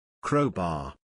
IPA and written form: ˈkroʊ.bɑːr (Crowbar)